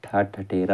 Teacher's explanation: मूर्धन्य महाप्राण अघोष व्यंजन वर्ण का उदाहरण